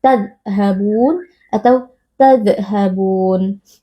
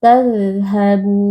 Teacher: Nah, ini dua-duanya tidak boleh karena huruf dzal ini merupakan huruf rokhawah yang artinya ketika sukun huruf dal ini kita baca dengan suara yang mengalir